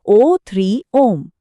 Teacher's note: 3 मात्रा का समय लगे तो प्लुत कहलाता है